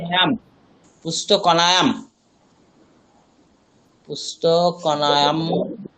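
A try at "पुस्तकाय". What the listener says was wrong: কনায়াম কোথায়? দন্তান্ন কোথায় পাচ্ছেন?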